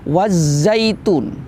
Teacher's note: Setelah alif lam ada huruf yang bertasydid, alif lam tidak terbaca. Kemudian tun itu ada mat tabi'i bertemu dengan waqaf, namanya mat arid lis sukun. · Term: alif lam syamsiyah